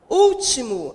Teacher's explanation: Último, a sílaba tônica é o u, também está acentuada